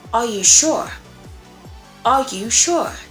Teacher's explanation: the rising intonation. Now, it's often used in questions or to indicate uncertainty